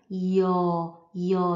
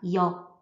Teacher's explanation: Yo besteht aus I, I-Teil, I und O-Teil. Also die Mundform ändert sich von I und später wird, wird die Mundform O.